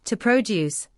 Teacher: As a verb, to produce, the stress is on the second syllable.